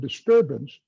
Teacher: In this word, disturbance turb is a stress maximum. More than dis more than ance.